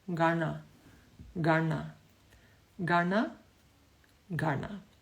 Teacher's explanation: It means you roll the tongue back, and the bottom of the tongue touches the dome of the palate. So it sounds like this, Gana, Gana, Gana, Gana.